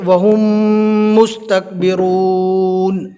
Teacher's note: ملا کر تھوڑی دیر گننا کرنا ہے. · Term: ادغام شفوی